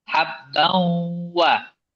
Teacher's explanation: Bahasa Sunda ngirung. Jadi masuk ke hidung. Habbawa. Itu baru tepat. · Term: idgham bi gunnah